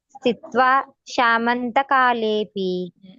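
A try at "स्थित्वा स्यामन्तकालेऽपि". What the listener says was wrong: ನೀವು ಸ್ಯಾ ಅಷ್ಟೇ ಹೇಳಿ. ಸ್ಯಾಮಂತ. ಅದು ನೀವು ಕೂಡಿ ಹೇಳುವಾಗ ಶಾ ಆಗ್ತಾ ಇದೆ, ಅದು ಸ್ಯಾಮಂತ.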